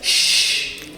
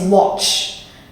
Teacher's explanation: The ch sound is a lot more harsh and shorter